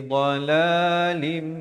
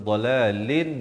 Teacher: Daripada dhalalin jadi dhalalim. Tapi jangan lupa dengungkan 2 harakat. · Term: idgham bi gunnah